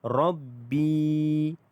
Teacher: B itu dibaca dengan panjangnya 2 harakat kerana mad asli huruf ya. Rabbi 2 harakat.